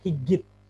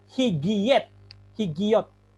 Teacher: Vokal, yodnya kehilangan jati diri. Dia menjadi vokal. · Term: hirek yod